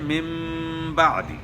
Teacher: غنہ بھی ہوگا اور نون کی آواز میم سے تبدیل ہو گئی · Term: اقلاب